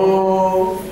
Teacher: مد الواو المدية انضمام للشفتين طبعا يصحب ذلك الوضع مع ارتفاعي أقصى لسان